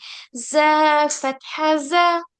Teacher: जैल में आप बिल्कुल इसको लाइट पढ़ोगे, जैल हल्का सा, और जब ये जा है, जा में थोड़ा सा प्रेशर लगाओगे तभी सीटी वाली आवाज निकलेगी।